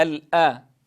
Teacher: الأمر الأول الحذر من تفخيم الهمزة، فلا أقول الأرض وإنما الآ.